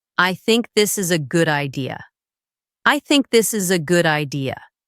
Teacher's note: Anytime you are giving your opinion, explaining your idea, making a decision, let your voice fall at the end of the sentence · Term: falling tone